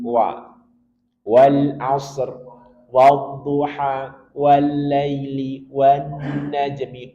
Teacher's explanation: ketika kita mengucapkan huruf wa wajib monyongkan bibir dahulu. Dua bibirnya dimonyongkan.